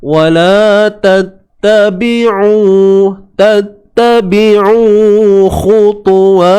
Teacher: Sempitkan tengah kerongkong. Ingat huruf ain mesti sempitkan tengah kerongkong.